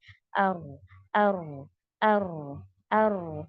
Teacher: آپ جب بھی را کو پڑھیں گے تو وہ آٹومیٹکلی آپ کی تکرار کی صفت نکلنے والی ہے, بٹ زیادہ نہیں نکلے گی, یعنی کہ آپ نے ار بہت نہیں کرنا ہے. آپ کا جو ٹنگ ہے وہ تھوڑا سا وائبریٹ ہوگا, وہی وائبریشن کو ہم تکرار کہتے ہیں, ٹھیک ہے, جو کہ را میں پایا جاتا ہے.